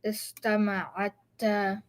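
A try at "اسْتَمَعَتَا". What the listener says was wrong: So now the way you're saying it is istama'atta, like that. You see the shadda here? Get rid of it. Istama'ata.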